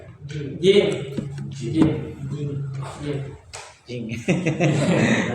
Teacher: Jing tenggorokan bagian tengah bukan tenggorokan jim sih alisan alisan jim jim tengah lidah tengah tengah lidah bertemu langit-langit · Tengah lidah. Tengah lidah bertemu dengan langit-langit